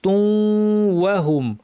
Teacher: গুন্না সহ ইদগাম করতে হবে নাক থেকে গুন্না হবে তুম অর্ধেকে গুন্না পরে যখন ওয়া বলবো তখন গুন্না শেষ তুমহুম